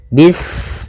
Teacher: Pada bacaan bis ini sempurnakan huruf sinnya. Ketika sinnya sukun, ini ada sifat shafir, dia harus kita alirkan nafasnya. Bis, nah seperti itu sempurna, baru baca mi.